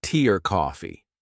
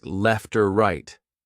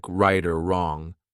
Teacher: the word or gets reduced shortened and linked to a word before or after